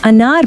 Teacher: الف مکسورہ جسے ہم جلدی سے بغیر کھینچے پڑھتے ہیں جیسے انار میں۔